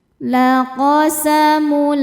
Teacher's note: Cara bacanya tanwin dileburkan ke lam tidak disertai dengung. Jadi cukup ditekan. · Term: idgham bila ghunah, idgham bila gunnah